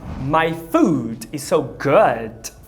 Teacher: Quando a comida tá boa demais, primeiro você usa o U longo e depois o ferradura de cavalo